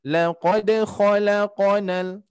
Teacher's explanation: khusus huruf qaf nanti ketika sukun dia mengarahnya ke harokat fathah. Mungkin sudah ke harokat fathah cuman kurang diringankan kembali. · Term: qalqalahnya